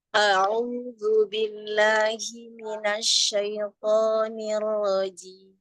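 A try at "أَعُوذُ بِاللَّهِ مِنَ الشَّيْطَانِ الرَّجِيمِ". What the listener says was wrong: Huruf shinnya tafasikan lagi, Bun, sedikit.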